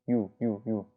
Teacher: 유 사실 얘는 이 플러스 우예요. 이우가 유가 된 거거든요. 유. 그 다음 우 플러스 어예요. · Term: 이중모음